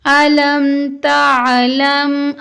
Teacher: یہاں پر میم ساکن کے بعد تا ہے تو غنہ نہیں ہوگا